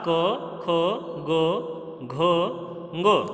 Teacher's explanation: इनका उच्चारण स्थान है कंठ। ये सभी जो वर्ण हैं वो गले से उच्चरित किए जाते हैं, गले से बोले जाते हैं